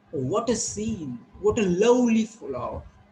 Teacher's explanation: When you say what a scene, so there is a rising tone.